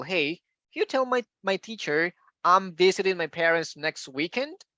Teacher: this is a question a yes no question so we need to raise intonation